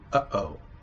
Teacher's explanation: Uh-oh is very distinctive. The glottal stops there are very distinctive.